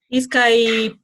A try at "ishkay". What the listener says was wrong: Ishkai. Ishkai. Pronuncia, por favor. Ishkai, no es Iskai. Ishkai.